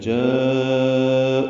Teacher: او کو 2 حرکات لمبا کریں گے · جاءوا میں الف مدہ کے بعد حمزہ آنے کی وجہ سے ایک ہی کلمے میں مد متصل بنی ہے. ہم اس کو 4 حرکات سے زیادہ لمبا کرتے ہیں. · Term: واو مدہ